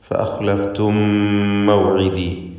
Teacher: ഫഅഖ്ലഫ്തും മൗഇദി, ഖാ അല്ലാത്ത മറ്റക്ഷരങ്ങൾക്കെല്ലാം തർക്കീഖാണ്, എല്ലാം ഇസ്തിഫാലിൻ്റേതാണ്. ഇവിടെ സാക്കിനത്തായ മീം ശേഷമുള്ള മീമിൽ പൂർണ്ണമായും ലയിപ്പിച്ച് ഒറ്റ ശബ്ദുള്ള മീമാക്കി മണിച്ചുകൊണ്ട് ഉച്ചരിക്കുന്നു. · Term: ഇദ്ഗാം ഷഫവി